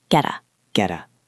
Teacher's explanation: Notice the T sounds a bit like a soft D here in American English, or a crisp T in British.